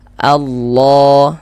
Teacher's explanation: Maka kalau ada lafaz Allah sebelumnya harokat fathah, maka lafaz Allahnya dibaca tebal. Huruf lam yang di tengahnya nih, huruf lam jalalahnya itu kita tebalkan.